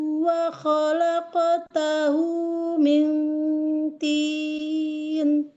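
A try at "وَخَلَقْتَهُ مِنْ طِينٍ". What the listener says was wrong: Ketipisan dengungnya. Ketipisan dengungnya. Tinnya. Miltin. Nggak naik ini lidahnya. Milti. Tapi jadi caranya bacanya ya pas di kayak lidahnya kayak mau baca huruf po-nya tasdid. Milk. Milk.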